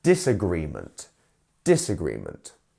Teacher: the dis doesn't change anything with the stress it stays on the gree part